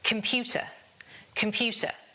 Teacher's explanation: the stress is on the second syllable, the pew, so it's computer.